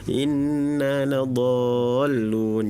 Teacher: harusnya do-nya itu 6 harokat terus tahan ya, tadi kurang lebih baru 3 ya, inna ladhallun. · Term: mad lazim kilmi musaqqal